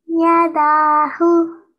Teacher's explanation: You made the da for 2 seconds long, and the ya and the hu was just 1 second.